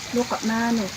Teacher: huruf qaf mati di tengah kalimat dibaca dengan dipantulkan dengan pantulan yang kecil. Dalam kata libnihi terdapat hukum bacaan qaqalah sugro karena huruf ba mati atau sukun di tengah kalimat dibaca dengan dipantulkan dengan pantulan yang kecil.